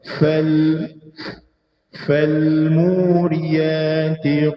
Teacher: Ayat yang kedua fa. Fal mesti ada macam tekanan sedikit pada makhrajnya, tengah bibir bawah kena dua gigi atas macam kita tiup secara sederhana.